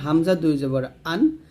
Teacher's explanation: হামজা দুই জবর আন হলকের শুরুতে বলতে হবে